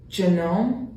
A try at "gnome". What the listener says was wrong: no, no, it's gnome. See how? It's because the G is silent. That's why.